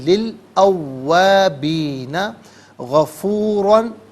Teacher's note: فا علیحدہ، ان علیحدہ، ہو علیحدہ ملا کر پڑھیں گے، فَإِنَّهُ كَانَ لی الاوابین، لام کے نیچے زیر ہے، اسے الاوابین کے لام ساکن کے ساتھ ملائیں گے، درمیان میں سے الف یعنی حمزہ کو حذف کریں گے، اسے ہم پڑھیں گے للاوابین غفورا، را پر دو زبر کی تنوین، اسے پر کر کے پڑھا جائے گا، اور یہاں وقف کریں گے تو تب بھی پر کر کے پڑھیں گے۔